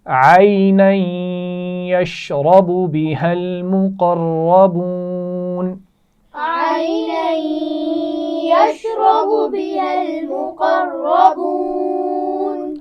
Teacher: عَيْنًا آگے لفظ سے ملائیں گے تو یہاں غنہ بھی ہوگا. یشرب را موٹی پڑھی جائے گی.